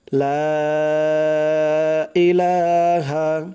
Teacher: লা এখানে 3 আলিফ পরিমাণ টান দিতে হবে